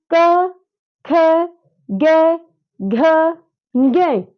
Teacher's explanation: क ख ग घ को जब हम बोल रहे हैं तो हमारे कंठ से आवाज आई